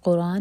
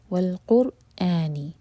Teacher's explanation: قر یہاں پر را ہیوی ہوگا اور اس کے بعد حمزہ کا کٹ آف ساؤنڈ کلیئر آنا چاہیے